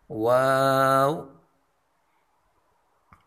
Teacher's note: ہونٹوں کو گول کرنے سے